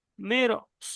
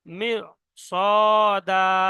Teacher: তো র যেটা বারিক হওয়ার কথা ছিল বারিক না হয়ে পুর হয়ে যাবে। যেমন মিম র জের মির, সদ আলিফ জাবার স, মির স, মুখটা গোল হয়ে যাবে, মির স, একটু প্র্যাকটিস করতে হবে। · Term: র পুর